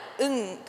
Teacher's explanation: இங்கு பிறக்கும் பொழுது என்ன வித்தியாசம் என்றால், நாக்கு அப்படியே பொருத்தி இருக்கும் பொழுது காற்று வாயினூடாக வெளியேறாமல் மூக்கரை வாயில் ஊடாக மூக்கினால் வெளியேறுகிறது. இந்த ஒலிதான் இங் என்று நீட்டி ஒலிக்கிறது. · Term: மெல்லின ஒலி